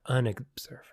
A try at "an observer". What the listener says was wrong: And you have to say "an" because it sounds like you're saying we're unobservant. Your pronunciation is leading us down a path.